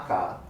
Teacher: the back of my tongue must raise and completely stop the air flow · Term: completely blocked